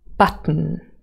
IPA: bʌt.ᵊn